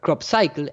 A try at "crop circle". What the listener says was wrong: You're saying cycle. I thought crop circle.